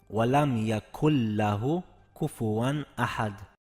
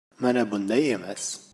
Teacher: lam boʻlgani uchun uni g'unnasiz talaffuz qilamiz